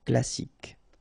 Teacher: You don't insist on the final E, so you get K as the last sound.